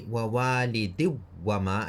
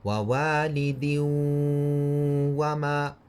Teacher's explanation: So instead of saying din wa, you're going to say wawalidin wa, and you're going to make this wa sound very soft, which will allow you to stretch it in a ghunna. So if you say wawalidi wama and you made the waw very hard, you won't be able to stretch it like a ghunna. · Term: idgham